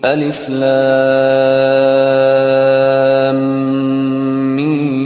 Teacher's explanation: 6 حرکت کرے، بیچ میں غنہ بھی کرے، بیچ میں غنہ بھی کرے. لام پڑھ کے میم، دوسرا میم پڑھنا شروع کرنے سے پہلے غنہ کرے